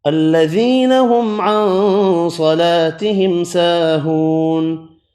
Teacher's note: اس آیت میں یہاں ہم نے حمزہ لگایا، الذی، یا مدہ ایک الف کی مقدار میں کھینچ کر پڑھا، میم کا اظہار کیا، نون کا اخفا کیا، صاد پر پڑھا، الف مدہ دو ہیں، دونوں کو ایک ایک الف کی مقدار میں کھینچ کر پڑھا، واو مدہ بھی ایک الف کی مقدار میں کھینچ کر پڑھا، نون ساکن پڑھا وف کی صورت میں۔